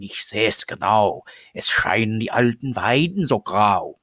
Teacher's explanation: the poem using the standard uvular fricative